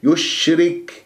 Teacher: ومن يشرك نون ياء، اتفقنا ما سويها يا صافي، ومن خطأ لازم غنى من الخيشوب، لا تسحب ضمة الياء إلى الشين، يشرك الشين صفيها من انتظام والشين تفشي، وتتجلى الصفات في الحروف الساكنة، التفشي صفة خاصة بالشين، ويجري فيها الصوت والنفس، والراء مرققة لين مكسورة، الكاف فيها همس في الوقف والوصل.